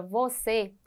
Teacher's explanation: tínhamos visto Observe as palavras você veja que a palavra você ela é oxítona por quê Porque ela tem a última sílaba como sendo mais forte